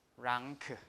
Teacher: So the problematic sound here is the N, right? Because it will become N with a tail, right? Because it's before K